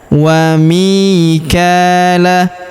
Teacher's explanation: huruf mi kita panjangkan dua harakat karena ya sukun di depannya